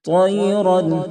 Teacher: تو کو مکمل طور پر پر کریں یعنی موٹا کریں تاکہ تا سے نہ بدلے